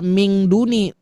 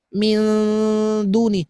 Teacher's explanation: Bunyikan huruf n-nya samar masukkan kepada makhraj huruf dal begituun. Nah, jadi tidak ming min duni minuni min ujung lidah sudah naik ke atas ke belakang gigi seri atas. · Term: ikhfa